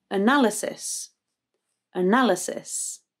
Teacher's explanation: with analysis the second syllable is stressed na but there is a schwa either side so the a at the beginning and then the y afterwards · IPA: /ə/